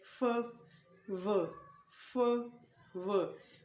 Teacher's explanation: F and V is produced by your front teeth and lower lip.